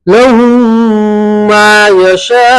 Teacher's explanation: लहुम लहुम मा यशाऊन। ठीक है, मीम साकिन के बाद मीम आया तो मीम का मीम में इदगाम होगा और गुन्ना के साथ पढ़ेंगे